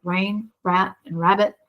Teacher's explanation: the sound is produced in the back of the oral cavity and because most of the action is taking place inside in the back. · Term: prevocalic R